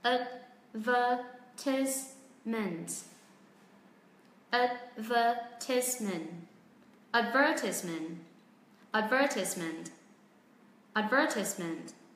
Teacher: Chúng ta hãy đọc tất cả các âm tiết này mà không có trọng âm nhé. Tức là cao độ ngang như nhau.